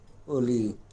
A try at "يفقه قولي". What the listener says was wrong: একবারে পড়তে হবে তো, অনেকক্ষণ পরে পড়লে হবে না, আর জোরে পড়তে হবে। ভুল গেলেও ইয়াফ কাহু কন আর কহু কন জোরে জোরেই পড়তে হবে, ঠিক আছে?